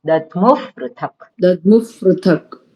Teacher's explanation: વિસર્ગનો ફ અડધો બોલવાનો